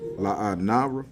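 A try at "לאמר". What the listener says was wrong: no, it's an M there. It's just not at the end. The end looks like that square. So it's La'amara.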